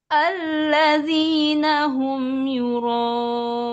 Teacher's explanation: Ya, sekarang datar awalnya, ujungnya rendah.